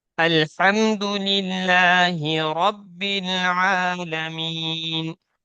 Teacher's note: را کو پر کرنا ہے یعنی موٹا کرنا ہے, پھر عین کو نکالنا ہے